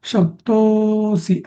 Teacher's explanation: हा जो अवग्रह असतो ना बऱ्याच जणांना अशी सवय असते की तिथे लांबवायचं पण तिथे लांबवायची काही गरज नसते